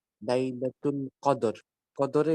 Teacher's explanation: কদরে এখানে আবার কলকলা হবে দালের দালের সাথে